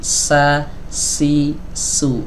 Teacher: kalau huruf Sin kan suaranya ngalir ya kemudian nafasnya juga ikut mengalir